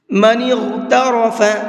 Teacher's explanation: غین کو بھی اور را کو بھی دونوں حرفوں کو پر کر کے پڑھیں گے